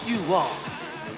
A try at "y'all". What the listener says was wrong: It ain't you all, it's y'all. Y'all.